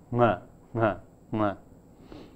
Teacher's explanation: In some languages, there is a very unusual type of velar sound produced, such as a voiceless velar nasal